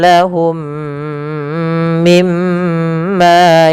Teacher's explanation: Mim yang pertama masukkan mim kedua dan ditahan sepanjang 2 harokat. Kemudian mim yang kedua yang itu ditahan, yaitu adanya gunnah. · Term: idgham mimi